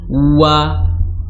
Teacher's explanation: Beda kalau memonyongkan bibir pada huruf wawu, wa, karena memang makhrajnya di bibir